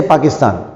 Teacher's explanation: पी बोलने के लिए, पाकिस्तान बोलने के लिए होंठ मिलाना बंद करना ज़रूरी है। अगर आपके होंठ मिलेंगे नहीं पी बोलने के लिए तो आप पाकिस्तान सारी ज़िंदगी नहीं बोल सकते।